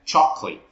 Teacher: Nó sẽ không phải là collate đâu, nó sẽ âm K xong rồi L xong rồi late luôn đằng sau · Mình thường Việt mình đọc mình dịch là sô cô la, và khi một số bạn học viên của mình phát âm cái từ này, người phát âm hay phát âm là chocolate, nhưng mà trọng âm của nó thì rơi vào âm tiết thứ nhất là cái từ chọc